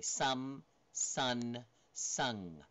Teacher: Some is bilabial. Sun is the alveolar. And then sung is velar. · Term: change in location